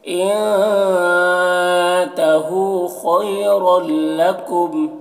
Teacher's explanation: रल यहाँ पर इदगाम में ताम हो रहा, तनवीन को लाम से मिलाकर बगैर गुन्ना के पढ़ेंगे। और कुम यहाँ पर वक्फ मुतलक की अलामत है, वक्फ करेंगे, जैसे इंतहू खैरल लकुम।